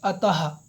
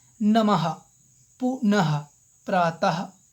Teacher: तो आप देख सकते हैं कि विसर्ग का चिन्ह ऊपर नीचे दो बिंदु है। यह कंठ से बोला जाता है और इसकी ध्वनि ह के समान सुनाई पड़ती है। तो इसकी ध्वनि ह के समान सुनाई पड़ती है।